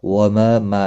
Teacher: ما الف مدہ ہے، 1 الف کے برابر کھینچ کر پڑھیں گے